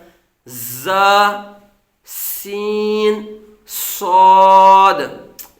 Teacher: इनको दा करते वक्त सीटी की तरह तेज आवाज निकलती है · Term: हरूफ सफीर